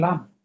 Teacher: জিব্বার আগার কিনার উপরে দাঁতের এক পাশে গোড়ার সঙ্গে লাগিয়ে